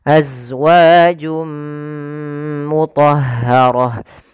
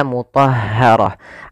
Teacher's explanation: setiap tak marbutah di akhir wakaf dirubah menjadi ha yang disukunkan maka mthaharah akan tetapi bila kita lanjut maka ia kita masukkan